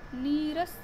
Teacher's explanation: जैसे निह प्लस रस, यहाँ पर विसर्ग के बाद र है, तो ऐसे में विसर्ग हट गया और इससे पहले वाला स्वर दीर्घ होकर नीरस शब्द बना, यानी छोटी ई की मात्रा बड़ी ई में बदल जाएगी।